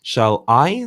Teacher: shall is unstressed I is stressed